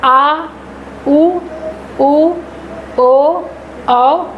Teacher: इनको बोलते समय पीछे के भाग से ध्वनि निकलती है। जो जीभ के का पीछे वाला भाग है उस पे दाब पड़ता है। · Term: पश्च स्वर